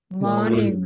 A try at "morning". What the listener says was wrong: morning good job,